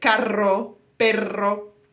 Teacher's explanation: it's letter R so you have to focus not only on the strong R which we all know it's kind of difficult rolling your RS